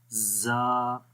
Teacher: آپ کی جو زبان کی نوک ہے وہ ثنایا سفلی کے کنارے پہ لگ رہی ہے، اور اوپر والا جو ثنایا علیا والے جو 2 دانت ہیں وہ ثنایا سفلی کے ساتھ آلموسٹ ٹچ کر رہے ہیں